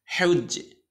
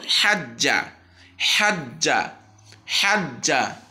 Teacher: কিন্তু জিম তাসদিদ কীরকম দেখেন, হাজ্জা, এখানে একদম স্পষ্ট জবরের উচ্চারণ তাসদিদের মধ্যে